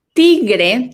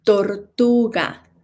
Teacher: T, no air coming out of our mouths, guys.